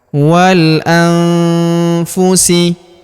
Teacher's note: maka nun sukunnya melebur ke huruf fu, kita baca dengung dan samar. Dengungnya kita tahan 2-3 harokat.